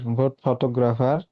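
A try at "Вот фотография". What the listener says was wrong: ফটোগ্রাফিয়া, ফটোগ্রাফিয়া লাস্টে কিন্তু ইয়া আছে, মোট ফটোগ্রাফিয়া।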